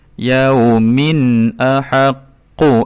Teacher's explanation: Di sini juga izhar halqi bunyi tanwinnya dibunyikan dengan jelas tanpa ada dengung